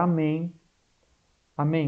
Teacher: sempre a última mais forte é oxítona